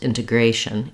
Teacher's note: Then when we move to integration, here we do stress on the A syllable because we typically have a pattern in English that when we have the shun ending, we always stress the syllable that comes before the shun.